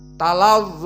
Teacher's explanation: maka ta murqoqoh dan lam murqoqoh dan do juga mufakhamah